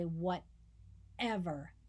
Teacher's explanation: really want to emphasize it i might say whatever right but most of the time we say whatever that is a glottal sound